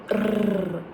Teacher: a trilled R sound that happens when you rapidly tap the tip of your tongue to the roof of your mouth. It's like rrr. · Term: rolled R